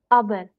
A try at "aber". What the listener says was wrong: Don't R word should not come out of your mouth. Aber.